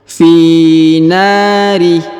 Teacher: Huruf na dipanjangkan 2 harokat karena di depannya terdapat alif